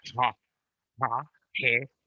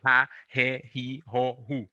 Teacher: You will hear Spanish people pronouncing it more to the back of the mouth